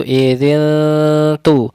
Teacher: Cara mendengungkannya itu idzin tu. Ketika idzin disamarkan, posisi lidah kita atau mulut kita makhrajnya sudah di huruf tu, idzin tu. Kemudian haditsu, su makhrajnya ujung lidah, su makhrajnya ujung lidah dikeluarkan. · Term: didengungkan, disamarkan, ditipiskan